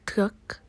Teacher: For most speakers of English, the T sound at the beginning of truck is accompanied by an audible outrush of air